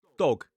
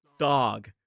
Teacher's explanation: Quite commonly, instead of the /ɒ/ vowel sound, they'll use the /ɑː/ vowel sound. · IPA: /dɒg/